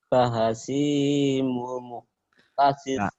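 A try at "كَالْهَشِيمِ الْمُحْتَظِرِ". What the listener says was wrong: Kahashimil muhtadir. Gak ada yang panjang di sininya. Kahashimil muhtadir. Kahashimil muhtadir.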